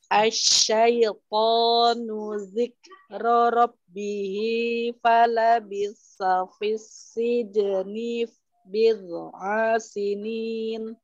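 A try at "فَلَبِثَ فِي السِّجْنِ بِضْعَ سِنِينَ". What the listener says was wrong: Coba deh, falabitha, tadi fa-nya seperti ada takdir. Falabitha fis-sijni.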